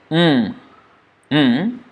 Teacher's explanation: the sound is blocked in the mouth completely but it's going through the nose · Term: nasal